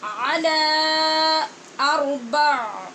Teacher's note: عَلَى کی آواز کو لمبا کرنے کے بعد روکیں گے اور پھر حمزہ بولیں گے